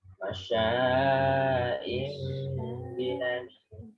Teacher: Jadi shinnya itu tafasyi ya, sifatnya sya. Nah, ngowos ya.